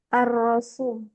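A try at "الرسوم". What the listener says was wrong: Ar-Rasum. Ar-Rusum bukan ra. Ar-Rusum. Ar-Rusum. Jamaknya rusum, lukisan-lukisan rusum.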